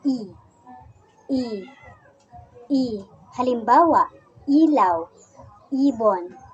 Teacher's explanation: Ang posisyon ng ating dila sa ponemang I ay nasa mataas at ang bahagi naman ng ating dila ay nasa harap. Kaya ito ay binibigkas na I.